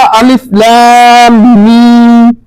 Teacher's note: اب دونوں ہونٹ میرے مل جاتے ہیں اور ایک وائبریشن پیدا ہو جاتی ہے، تو یہ وائبریشن پیدا کرتے ہیں۔